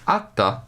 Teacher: Ata father is notable largely for the fact that it contains a geminate voiceless stop. It proves that monomorphemic geminates are happily permitted in Gothic.